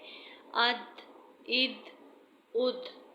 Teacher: جب دال پر جزم ہو تو دال کو ہلا کر پڑھا جائے گا اور حروف قلقلہ میں سے ہے۔ اد، اد، اد۔